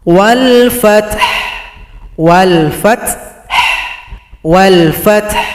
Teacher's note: Perhatikan kalau berhenti caranya adalah ha disukunkan berikan bunyi vokal.